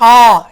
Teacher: அந்த ஓசை தொண்டையிலிருந்து ஆரம்பித்து வெளியே வருது. அதாவது ரொம்ப கஷ்டம் இல்லாமல் உச்சரிக்கிறோம். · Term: உயிர் எழுத்துகள்